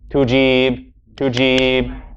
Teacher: We hear that the second syllable is long, the first one is short.